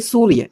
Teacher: यानी उस दांत के पीछे वाले हिस्से तक का जाती है। हमारी जीभ की जो नोक होती है वो दांत के पीछे वाले हिस्से तक का जाती है। जिससे जस जब भी हम सपेरे वाले सौ का उच्चारण करते हैं तो हमारी जीभ यहां टच करती है।